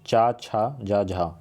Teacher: चा वर्ग का उच्चारण तालु से होता है या तालव्य बोल सकते हैं। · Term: तालव्य व्यंजन